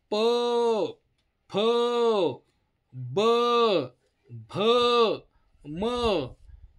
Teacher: ओठाचा वापर करून जे वर्ण उच्चारले जातात त्यांना म्हणायचं ओष्ठ